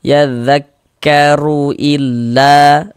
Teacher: la dibaca panjang ini namanya adalah mad jaiz munfasil namun pada awalnya dia namanya adalah mad thbi'i kenapa kok bisa berubah menjadi menjadi mad jaiz apa penyebabnya gitu kan sekarang perhatikan perhatikan ikan em rumus tiga yang warna hitam lagi. · Huruf ra kalau dia memiliki harokat dhammah juga dibaca tebal, dibaca tabkhim. Nah, sehingga pangkal lisan kita naik terangkat ke atas ketika kita mengucapkannya.